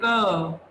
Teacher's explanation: म के साथ हल्की सी अ की आवाज आती है। · क कह के देखो उसके साथ अ अपने आप आएगा